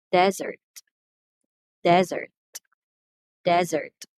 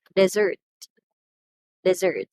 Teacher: the first syllable which receives the stress is the noun